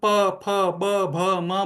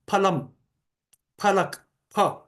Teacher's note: दोनों ओठ एक दूसरे को स्पर्श करने चाहिए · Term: ओष्ठ्य व्यंजन